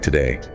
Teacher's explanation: a native speaker puts all the stress on the second syllable day. So the first syllable, the two gets reduced. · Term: schwa